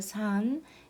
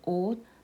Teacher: It is pronounced as 스 when used as an initial consonant and as t as a final consonant. For example, the first consonant 시옷 in the letter 산 is pronounced as 스.